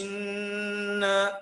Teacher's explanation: نون حرف غنة مشدد بالفتح، يغني كم حركة؟ حركتين